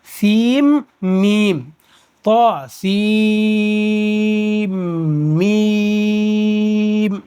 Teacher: طا سین میم، اس کو طا سین میم نہیں بولیں گے، طا سین کو میم میں ملا دیں گے